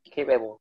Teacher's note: You stress the first syllable.